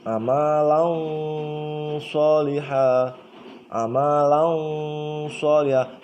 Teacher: Makhraj huruf shod itu ujung lidah dan ujung gigi muka atas dan bawah ya.